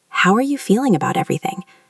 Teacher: It is not a sharp question. It is a soft inquiry. Your voice should remain level or dip slightly at the end to show concern. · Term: intonation